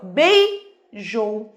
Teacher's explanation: O E é mais forte que o I, decrescente, ó, vogal, semivogal. · O O é mais forte que o U, vogal, semivogal. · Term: ditongo